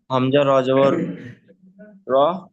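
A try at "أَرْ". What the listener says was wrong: হামজা র জবর কি র? কোনোদিন হামজা র জবর র হয়? তো র জবর র হয়, তাহলে হামজাটা কেন আসবে? হামজা র জবর র কেন হবে? তাহলে র জবর কি হবে?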